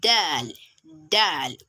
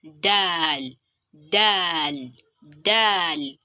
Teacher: when you are pronouncing your letter Daal, the tip of your tongue would meet the upper front tooth. But note here that it's not the roof of your mouth, but the upper front tooth.